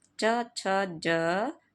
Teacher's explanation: संघर्षी व्यंजन होते हैं च छ ज का उच्चारण करते समय जीवा ऊपर उठकर तालू का स्पर्श करते है तथा कंठ छिद्र अवरुद्ध हो जाता है फल स्वरूप हवा को मुख से बाहर निकलने में संघर्ष का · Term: स्पर्श संघर्षी व्यंजन